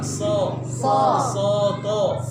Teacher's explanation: Caranya adalah ucapkan huruf S dengan O tanpa membulatkan bibir